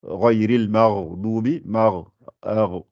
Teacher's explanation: Le raïn, c'est au début de la gorge.